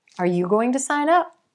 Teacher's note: shift the stress to the word up and we get a verb sign up which means to join